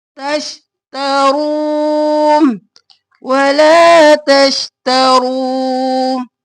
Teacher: तश और ता, तशता नहीं करना, शीन साकिन और ता जबर ता, जल्दी से। तश्ता और रो मोटा और वाव मद्दा है, खींचेंगे। रू, अलिफ खाली है, इसको नहीं पढ़ेंगे।